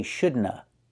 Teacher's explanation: Sometimes people don't say of, they just say uh.